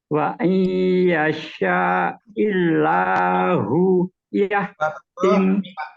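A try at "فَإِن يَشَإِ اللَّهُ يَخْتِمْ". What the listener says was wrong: Bukan wa'i, fa'isya'illah.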